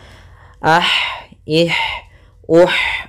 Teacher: Di sini ada ha. Ha salah satu sifatnya sama seperti ta, yaitu hames. Mengalirnya nafas kita.